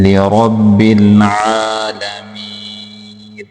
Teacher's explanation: را کو پر کر کے پڑھیں گے، با کو آگے لام کے ساتھ ملا کے پڑھیں گے